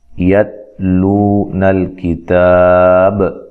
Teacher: تا کو باریک پڑھنا ہے اور تا کو ہلانا نہیں ہے